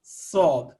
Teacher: صاد اور سین میں فرق یہ ہے کہ صاد تھک لیٹر ہے، اس کو منہ بھر کے گول کر کے پڑھنا ہے. صاد مخرج وہی ہے، زبان کی نوک زبان سامنے والے نیچے کے دو دانتوں سے ٹچ کر کے تو اس کو ادا کرنا.